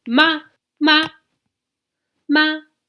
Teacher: The fourth type of tone goes straight down, and it's like very forceful